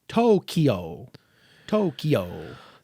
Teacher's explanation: Americans tend to say the second syllable as the stronger one.